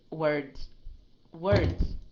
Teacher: it's a Z sound and it's very light.